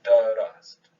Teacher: There's an ah vowel in between the del and the ra, and then an ah vowel, a fatha between the ra and the sin. Right? And there's actually two syllables in there.